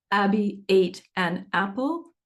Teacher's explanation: so if I say Abby ate an apple the vowels are having hard onsets we're trying to smooth those out because it's a little less